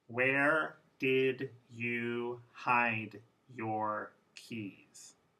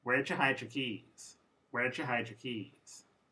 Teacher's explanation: D and Y will both disappear, but there's a new sound there.